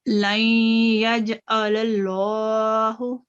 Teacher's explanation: اس میں یہ ادغام ناقص ہے، اس کو غنہ کے ساتھ 2 سیکنڈ کے لیے اس کو غنہ کریں گے. تو جیم جو ہے یہ قلقلہ ہے، یہ سافٹ قلقلہ ہوگا. · للہ یہ تفخیم اللام جلالہ ہے کیونکہ اللہ کے لفظ سے پہلے فتح آ رہی ہے